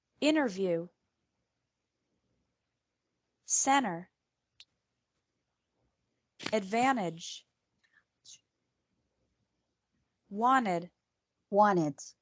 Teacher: This varies from person to person, and it depends on the region the speaker is from. But in some words, the sound of the letter T really disappears, especially when there is an N or S before it. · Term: disappearing t, disappearing T